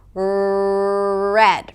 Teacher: And in American English, the tongue doesn't touch the upper palate - it's pulled back.